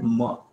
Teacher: Again, both lips are being used, but there is a nasalization. There is a nasal sound.